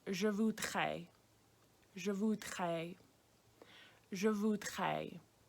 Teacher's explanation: it's that DR sound, which makes a very strong nasal R sound. If that's hard to say, what you can try to do is almost make an H sound.